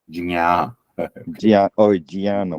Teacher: down south, we pronounce nya, but actual thing, it has to be jnya.